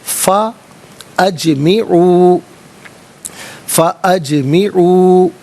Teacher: جیم ساکن ہے لیکن حرف قلقلہ ہے تو آواز لوٹتی بھی محسوس ہونی چاہیے